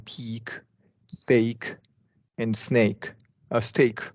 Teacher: K is usually lightly released following long vowels like in peak, bake, and steak.